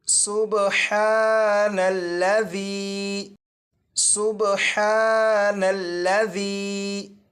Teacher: یہاں پر دیکھیں یہ جو سین ہے، اس سین کو سیٹی کی آواز کے ساتھ پڑھیں گے، اور یہاں پر یہ جو با ہے اس پر کلکلہ خوب ظاہر کریں گے۔